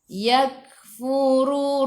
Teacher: Yak kena ada angin. Okey, yak kena ada angin sedikit sahaja, jangan banyak. Sifat hurufnya hamas.